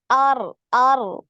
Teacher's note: yang ngalir itu bukan getarannya ya, tapi suara. Getarannya sekali aja. R, gitu ya, sekali R.